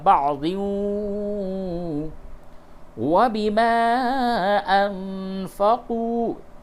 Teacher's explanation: تنوین کے بعد واو ہے، ادغام مع الغنہ ہوگا